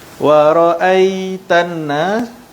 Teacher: ra ni ra baris atas, ra tebal